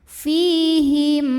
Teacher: ada ya sukun yang sebelumnya baris kasrah maka huruf Fa ini kita panjangkan dua harakat saja